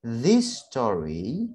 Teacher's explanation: This story, ini double S, jadi kita ambil hanya satu saja. This story, story berakhiran I, ya, berakhiran I.